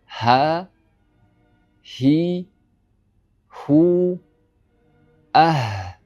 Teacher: Bu harfimiz halqumni eng tubidan, ya'niki tomog'ini eng tagidan mana shu joydan chiqadi. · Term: ha harfi